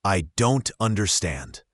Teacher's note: focus on the T in don't. In natural speech, it's often not pronounced strongly, or it disappears completely, especially before a vowel or another consonant sound.